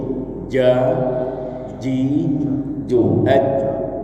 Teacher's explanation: Tengah lidah sejajar dengan langit-langit keras tengah ya kan? Nah, tengah lidah naik dan menutup tengah er tengah langit-langit atas itu · Tengah lidah naik dan menutup tengah langit-langit atas itu huruf jim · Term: huruf jin